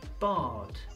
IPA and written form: bɑːd (Bard)